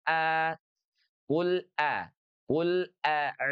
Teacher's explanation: huruf hamzah itu diucapkan dari pangkal tenggorokan kita. Aqsal halqi. Ya, dengan sedikit penekanan karena memang dia memiliki sifat syiddah. A a dan dia berada dalam posisi fathah.